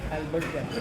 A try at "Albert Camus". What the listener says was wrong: Albert Camus नहीं है. His exact pronunciation is Albert Camus. It's not campus. It's Albert Camus.